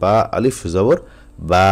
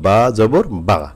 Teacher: বা বা একই উচ্চারণ, কিন্তু একটা টান হবে একটা টান হবে না। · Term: মদের হরফের উচ্চারণ